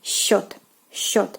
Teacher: this combination of two consonants in the beginning are pronounced. It is sc, but is pronounced like sh